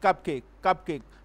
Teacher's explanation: will be both syllable will be stressed like cupcake cupcake mean there will be equal stress on both the syllable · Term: spondy